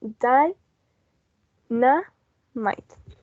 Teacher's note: it only has 3 syllables because we have two diphthongs. We have die and might at the end, so it's only 3 syllables.